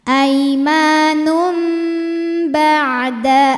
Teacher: tanwin dammah menghadapi huruf ba maka bunyi tanwin diganti bunyi mim jadi tadinya aimanun jadi aim Um jadi m ya dan ditahan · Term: iqlab